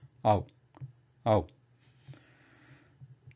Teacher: The muscles in the throat, they're relaxed, and we are starting with a, so start with this wide open mouth and quickly change it to oo position, ow, ow. Again, the throat retains relaxed natural position like a and oo is natural.